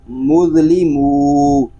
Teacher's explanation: حمزہ نون زبر ان، تا میم میم پیش تم، انتم میم ضا پیش مذ، انتم مذ، لام زیر لی، انتم مذلی، میم واو پیش مو، انتم مظلمو، اس کو منہ نہیں پڑھیں گے، ناک میں آواز نہیں جانی چاہیے، بلکہ پڑھیں گے مظلمو، نون زبر نا، انتم مظلمون۔